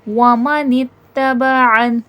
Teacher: आइन हुर्फ़ हलक़ी से है, हलक के दरमियानी हिस्से से वसतुल हलक़ से आइन अदा किया जाएगा